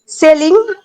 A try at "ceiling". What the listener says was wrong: না, সেলিং না, সিলিং।